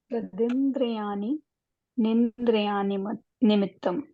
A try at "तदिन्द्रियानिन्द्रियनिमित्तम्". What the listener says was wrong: हाँ, थोड़ा सा बीच में वो जो पॉज दिया ना, उससे वर्ड रिपीट हो गया है ना। तदिंद्रियानिंद्रिय निमित्तम, ठीक है।